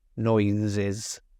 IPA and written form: ˈnɔɪzɪz (noises)